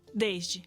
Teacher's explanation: os sons de T e D influenciam do S que acaba virando um X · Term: chiado